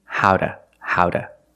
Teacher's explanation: Why do we say howda? Because the T is between vowels, phonetically.